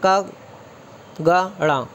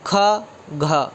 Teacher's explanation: अल्प प्राण मतलब जो थोड़ा कम मेहनत से बोला जा रहा है, क ग ड़। और महाप्राण ख घ, इसमें थोड़ा सा अधिक समय लग रहा है